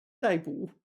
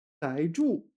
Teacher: 逮 捕, fourth tone here. And 逮 住, third tone.